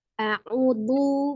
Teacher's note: Makhraj huruf zal itu ujung lidahnya berada di ujung gigi seri bagian atas. Lu. Jadi harus keluar sedikit.